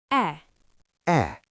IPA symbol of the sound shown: e